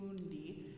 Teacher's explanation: Think of it around like the moon, mundi, and keep open on that vowel and just sneak the N in at the very last second before that D